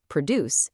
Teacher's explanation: When it's a noun, you absolutely must stress the first syllable, produce. If you stress the second syllable, produce, it becomes a verb